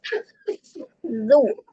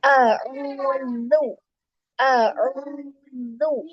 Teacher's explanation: Meskipun dia domah, tapi zu tidak langsung mencucuk si bibirnya.